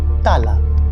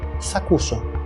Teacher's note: the last vowel of the first word drops. Τα άλλα turns into τ' άλλα.